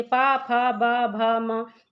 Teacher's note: इनको आप बोलकर देखेंगे तो आपके ओष्ठ आपस में एक दूसरे को टच करते हैं। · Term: ओष्ठ से उच्चारित होने वाली ध्वनियाँ